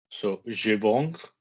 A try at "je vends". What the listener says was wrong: Why can I hear a hard? Je vends, I can hear a fucking hard. What's the soft of vendre? Good, but guys, be interested in vowels because if you go, it's difficult. Je vends. Be interested in vowels.